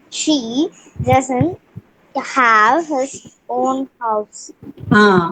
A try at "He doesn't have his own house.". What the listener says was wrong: It is not she, it is he. For he you are reading she, or for she you are reading he.